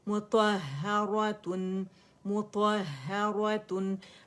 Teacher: میم بھی باریک ہے، ہا بھی باریک ہے اور ہا مشدد ہے